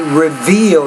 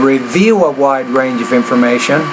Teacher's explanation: Right, now here you want to say reveal. You got to pronounce that V with more vibration.